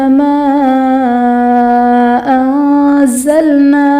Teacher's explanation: ما انزلنا میں الف سے پہلے میم پر زبر، الف مدہ کا قاعدہ اور حرف مدہ کے بعد حمزہ دوسرے کلمہ میں ہے تو یہاں پر مد منفصل کا قاعدہ ہوگا۔ انزلنا میں نون ساکن کے بعد حروف اخفاء میں سے زا آ رہا ہے تو یہاں پر اخفاء کا قاعدہ ہوگا، یعنی نون ساکن میں ہم غنہ کریں گے۔